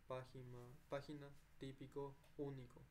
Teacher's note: Esdrújula, la sílaba tónica es la antepenúltima. Entonces, esta es última, penúltima, antepenúltima. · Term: esdrúculas